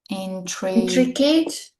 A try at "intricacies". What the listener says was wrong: Almost, but you're saying an adjective, and we need a different pronunciation here. So look, intricacies, all right? Intricacies are this complicated details. If it's one, it's just intricacy.